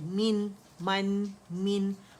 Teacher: میم کسرتین من, ایک کاؤنٹ کے لیے آواز نیچے جائے گی, لوجا نیچے ڈراپ ہوگا, زبان کا درمیانی حصہ ریز کریں گے, نون ساکن سے ملے گی آواز